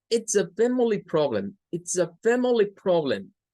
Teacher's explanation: ¿Dónde está el énfasis? En fam, en li y en prob. Esas tres palabras son, o esas tres sílabas, digamos, son las que llevan más fuerza de voz en esta oración.